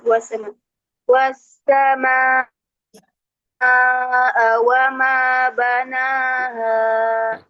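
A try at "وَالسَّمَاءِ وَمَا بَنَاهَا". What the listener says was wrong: Ee hamzahnya dibaca Ustaz. Iya dibaca hamzahnya. Coba diulang sekali lagi.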